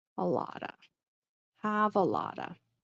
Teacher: you notice I'm kind of not really pronouncing the T, but sometimes I don't have a lot of energy.